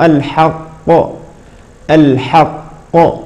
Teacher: الجيم الأولى ساكنة والثانية متحركة ولكنها عند الوقف تسكن فهكذا تقلقل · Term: القلقلة